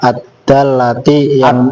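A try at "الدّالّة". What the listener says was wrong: Ad-dallati bukan ad-dallati, ad-dallati. Panjang, kan ada alifnya. Jangan ad-dallati, kalau lu ad-dallati seolah-olah alifnya nggak ada.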